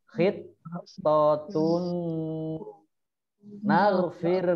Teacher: domah tanwin bertemu dengan nun, bacaan idgham bigunnah. Dibaca mendengung